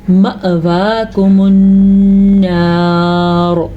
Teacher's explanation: حمزہ پہ ساکن ہے تو جھٹکا پیدا ہوگا